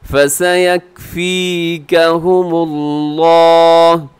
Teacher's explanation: लफ्ज़ अल्लाह को आप मोटा पढ़ेंगे क्योंकि लफ्ज़ अल्लाह से पहले मीम के ऊपर पेश है। ज़बर या पेश हो तो लफ्ज़ अल्लाह मोटा पढ़ा जाता है, ज़ेर होती तो हम इसको बारीक कर देते।